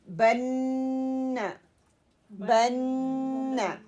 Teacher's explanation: نون شد کے غننے میں زبان کو نون کے نکلنے کی جگہ پر ہلکے سے دبانے کے ساتھ یہ ادا ہوتا ہے، اور آواز کو ناک کی جڑ سے 1 الف کی مقدار میں اس کو لمبا کیا جاتا ہے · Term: غنہ